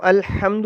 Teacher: یہ والا جو ہا ہے، جیم کی طرح کا جو لکھا جاتا ہے، نقطہ نہیں ہوتا، یہ حلق کے وسط سے نکلتا ہے، اس کا مخرج ہے حلق کا وسط۔